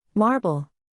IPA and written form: ˈmɑːr.bəl (Marble)